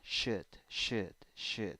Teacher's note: in the pronunciation you don't have o it's like a weak u and no l